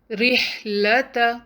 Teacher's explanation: اس word میں را کسرہ زیر کے ساتھ ہے تو لائٹ پڑھا جائے گا